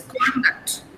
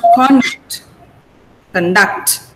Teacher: Now, the stress is on the first syllable. There are 2 syllables here. Con and duct. These are the 2 syllables.